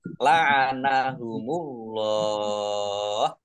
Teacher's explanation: Allahnya dibaca tebal karena harakat di depannya Fath · Allahnya dibaca tebal karena harokat di depannya fathah. Lam fathah berdiri matobi'i, tetapi karena bertemu dengan huruf terakhir yang dibaca sukun karena wakof, maka menjadi mar'arif lis sukun.